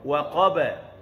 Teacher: Ba istifal, lidah rendah.